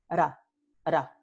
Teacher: La primera aquí se llama una vibrante simple porque solo hay un golpe, one little tap, del ápice de la lengua a los alveolos. Ra, ra. The tip of the tongue hits the alveolos just one time.